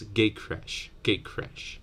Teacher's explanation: the T will borrow the Velar place of articulation from and then it might be pronounced as gay crash gay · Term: assimilation